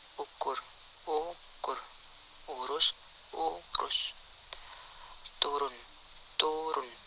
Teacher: Vokal belakang, tinggi bawah, bundar, tertutup. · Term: Vokal U